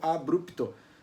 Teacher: A gente tá com uma vogalzinha no meio, assim, bem discreto, assim, só um cantinho ali do vogal, tipo abrupto.